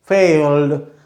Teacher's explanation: फ और ड की क्लियर है लेकिन ल की क्लियर नहीं है, दैट इज डार्क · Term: डार्क ल